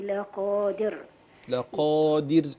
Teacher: الراء ترقق ساكنه وقبلها كسر